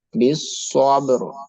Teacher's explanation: The ra sound will be bold because then we are reading after fatha letter. Bis sobro. The ba sound will be echo.